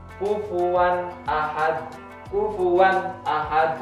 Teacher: Nah, jadi jelas ini tanwin bertemu hamzah, nggak boleh dibaca mendengung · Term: idhar